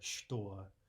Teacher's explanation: instead of ch, we're actually saying sh